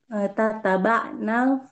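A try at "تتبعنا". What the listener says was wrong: Ini tasydid seperti tahaddatsna, tatabba'na. Ini tasydid. Kan dari maunya tatabba'a, ya tatabba'u, takallama, takallamu, tatabba'na.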